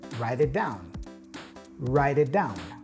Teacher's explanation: is pronounced as a D sound if it comes between two vowel sounds so here the T in right is pronounced as a d or flap T